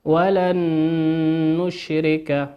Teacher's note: ولن نون ساكنة أتى بعدها حرف النون في كلمة نشرك، والنون من حروف الإدغام بغنة، ندغمها بمقدار حركتين ونقول ولن نشرك.